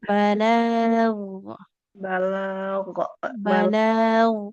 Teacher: Huruf ghain tidak memantul